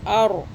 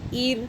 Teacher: پہلا والا موٹا تھا را، ار کیا، دوسرا جو زیر کے ساتھ ہے یعنی کہ حمزہ را زیر، تو اب را باریک ہو جائے گا